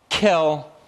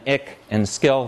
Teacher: There's an aspirated ka as well. Kill. It's different than the kas spoken in ik and skill.